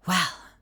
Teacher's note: she just starts half of her lines with this really Airy well